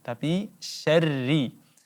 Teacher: syarri ada huruf ra yang berbaris kasrah, maka langsung ditipiskan, tarqiq, kita baca tipis.